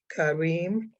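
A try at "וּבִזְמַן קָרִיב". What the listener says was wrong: Reeve, Kariv, that's a vet.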